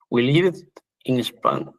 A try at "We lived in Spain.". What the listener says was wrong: Spain, muy bien.